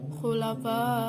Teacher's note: Di situ ada hukum tajwid mad wajib mutasil karena ada mad tabi'i bertemu dengan hamzah